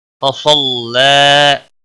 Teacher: صاد حروف مستعلیہ میں سے ہے، پر پڑھیں گے، اور لام کے اوپر کھڑی زبر ہے، ایک الف کے برابر کھینچ کر پڑھیں گے.